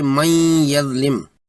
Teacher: وَمَن یظلم میں نون ساکن کے بعد یا ہے جو یرملون میں سے ہے، یہاں ادغام ناقص کریں گے اور پڑھیں گے من یظلم۔